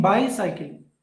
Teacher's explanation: So by is stressed and cycle is not stressed.